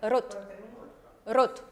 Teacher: la R no es tan pronunciada, sino es cortica